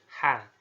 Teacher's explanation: ini dikeluarkan dari tengah-tengah tenggorokannya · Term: huruf H